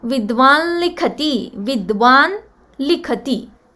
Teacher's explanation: So that likhati, this anuswara, is also telling us that the replacement is anunasika la, not just la.